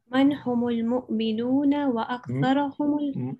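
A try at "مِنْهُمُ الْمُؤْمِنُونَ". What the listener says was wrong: It's not man, it's min. Min humul mu'minun.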